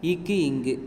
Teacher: நாவின் முதற்பகுதி அன்னத்தின் அடிப்பகுதியை பொருந்ததால் பிறக்கின்ற எழுத்துக்கள்